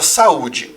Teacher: um encontro vocálico que vai se separar na hora da pronúncia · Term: hiato